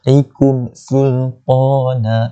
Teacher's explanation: mim mati bertemu dengan sin, hukumnya izhar syafawi, jelaskan saja, tidak perlu dengung. Sultana, bila orang dekat ni dia jadi mat iwad.